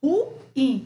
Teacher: o U e o I ficam em sílabas separadas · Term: hiato